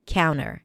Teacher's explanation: When the T appears after an N in unstressed syllables, it is often dropped